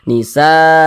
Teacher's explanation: satu kata atau dalam satu kalimat maka dia namanya berubah menjadi mad wajib muttasil panjangnya 4 hingga 5 harakat